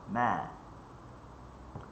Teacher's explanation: huruf mim ni dia pertemuan bibir atas dengan bibir bawah